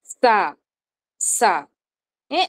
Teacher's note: నాలిక వచ్చేసి ఎదర పెదాలకి ఎదర పళ్ళకి తగులుతుంది